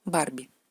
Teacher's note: B, siempre bilabial, no importa dónde está.